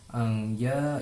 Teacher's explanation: Anja itu termasuk hukum tajwid ikfa karena nun sukun bertemu dengan huruf ja, berarti dibacanya samar-samar.